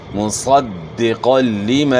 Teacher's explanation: دال کے اوپر شد ہے تو شد کو آپ نے خوب جماؤ کے ساتھ ادا کرنا ہے